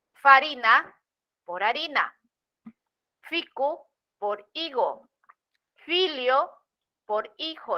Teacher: la f inicial latina se dejó de pronunciar y fue sustituida por la h